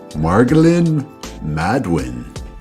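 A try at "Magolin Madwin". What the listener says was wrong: Oh, there's no R though, so eliminate the R.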